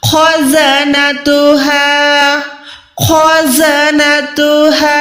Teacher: कुल्लमा उल्क़िया फ़ीहा फ़ौजुन सअलहुम, उसके बाद खौ मोटी, ख़ज़नतुहा, ख़ज़नतुहा, खौ मोटी भी है लेकिन हमने ये भी सीखा हुआ है कि हुरूफ़े हल्की है खौ, हलक के ऊपर वाले हिस्से से भी अदा करना है।